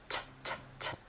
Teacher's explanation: It's made by taking your tongue tip and tapping it on the ridge behind your top front teeth. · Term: true T